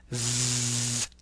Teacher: The eth sound is an interdental fricative consonant. Make this sound with vibration of the vocal folds.